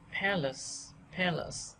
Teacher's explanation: A đầu tiên được nhấn trọng âm lại đọc thành e, còn a không nhấn trọng âm lại đọc thành ờ. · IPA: /ˈpæ.ləs/